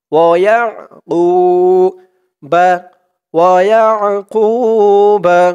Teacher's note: আইনের উচ্চারণটা কিন্তু গলার ভিতর থেকে শক্ত হয়ে আসবে।